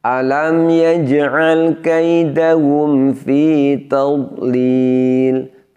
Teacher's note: dhad ini bukan termasuk huruf yang memiliki sifat syiddah. Karenanya suaranya tidak boleh ditahan dan tidak boleh diputus.